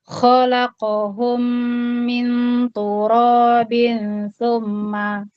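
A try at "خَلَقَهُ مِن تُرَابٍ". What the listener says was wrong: haknya tidak dimasukkan mimnya, disendirikan Mbak. Khalaqahu min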